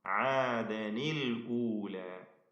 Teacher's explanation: ഇവിടത്തെ പരിഹാരം തഹ്രീക്കാണ്, ഹറക്കത്ത് നൽകുക. ആദൻ എന്നതിലെ സാക്കിനായ നൂനിന്റെ സുക്കൂനിനെ ഹറക്കത്താക്കി മാറ്റി ആദനിൽ ഊല എന്ന് കസ്ർ നൽകപ്പെട്ട നൂന് ഉച്ചരിക്കണം